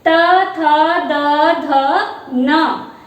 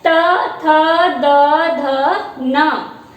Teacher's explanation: इनका उच्चारण जब करते हैं तो जिह्वा जो है हमारी ऊपर वाली जो दंत पंक्ति है उसे स्पर्श करती है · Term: दंत्य ध्वनियां